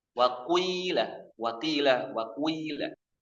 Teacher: Ada dhammahnya di awal sedikit, kemudian ya-nya mendominasi. Wakilah karena asalnya adalah ku wi, ada wawunya ku wi lah menjadi tila. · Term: ismam